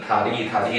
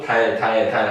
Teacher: 혀가 아래로 말려버리고 달 달 달 하면 혀가 그냥 위에 있지